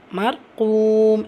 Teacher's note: ஃபத்ஹாவோ தொம்மாவோ தொடர்ந்து ரா சுக்குன் வரும்போது அந்த ரா வல்லினமாக இருக்கும்.